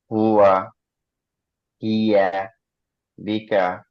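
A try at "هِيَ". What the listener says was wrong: হিয়াটা আর একটু সফট, হিয়া, হিয়া এভাবে না, না, হিয়া, হিয়া, নর্মালি।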